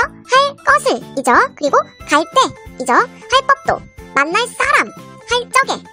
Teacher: 모두 다 예사소리가 된소리가 되었습니다